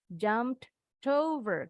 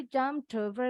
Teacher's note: Kita sambung nih huruf t-nya dengan huruf o. Ini namanya connected speech.